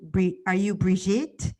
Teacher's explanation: She pronounced Bridget with a French accent, placing the emphasis on the second syllable so it sounded more like Brigitte, Brichette or something.